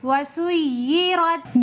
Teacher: سین کے اندر بھی سفیر کی صفت ہے، سیٹی کی صفت کے ساتھ پڑھیں گے